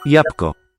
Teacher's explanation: Jabłko has a silent dark L.